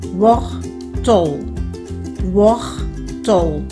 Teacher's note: chữ này nó nhấn ở âm tiết thứ nhất